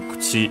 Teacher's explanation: the u will be barely heard, if at all, because it's between our voice consonants.